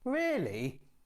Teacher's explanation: to sound annoyed the tones are lower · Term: rising falling tone